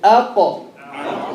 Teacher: Back of the tongue meeting with what? The roof of the mouth, the palate. Aqa. And the qaf is a heavy letter.